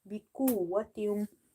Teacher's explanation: Qaf is from the musta'aliya letters, heavy, so you have to make it heavy.